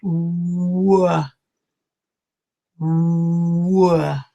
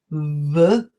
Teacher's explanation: What I'm doing is I'm making a W sound. So I bring my mouth together, and then I open it, w. So there is no contact with my teeth.